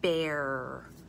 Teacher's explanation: I'm doing more of a bunched R.